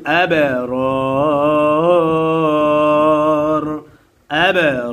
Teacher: মাদের হরফের বামের হরফে অক্ফ হইলে 3 আলিফ টানিয়া পড়িতে হয়, ইহাকে মাদ্দে আরজি বলে